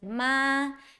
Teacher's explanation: First tone is flat, so first tone is ma.